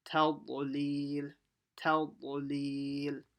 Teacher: ta has to be empty mouth, ta. And then you have to quickly switch to full mouth while saying the dad.